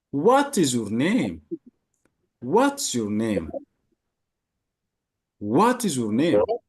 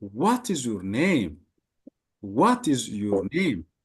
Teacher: your name የሚለው ምን ይሆናል? ፎል ይሆናል ማለት ነው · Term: falling intonation